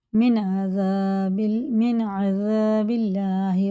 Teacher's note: یہ اظہار کا قاعدہ، نون ساکن کے بعد عین آ رہا، یہ حرف حلقی میں سے ہے، حرف حلقی 6 ہوتے ہیں، حمزہ ہا، عین ہا اور غین خا۔